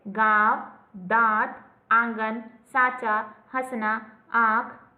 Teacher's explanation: ऐसे स्वरों का उच्चारण नाक और मुंह से होता है और उच्चारण में लघुता रहती है, जैसे गांव, दांत, आंगन, साचा, हंसना, आंख आदि। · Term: अनुनासिक